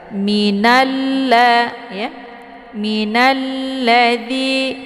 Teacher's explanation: D dibaca panjang dua harakat karena ada Ya Sukun sebelumnya harakat kisrah · assyamsiah karena sesudah alif lam bertemu dengan huruf Syamsiah yaitu la cara bacanya nunnya langsung dileburkan ke dalam huruf la ataupun dimasukkan dan untuk Alif lamnya tidak lagi dibaca minalla ya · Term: alif lam assyamsiah, alif lam asyamsiyah